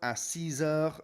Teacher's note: on the number 6, the X is pronounced with a Z sound, a Z sort of sound